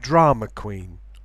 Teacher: there can be no intrusive R between drama and queen because queen begins with a consonant. It needs to be a word with a vowel.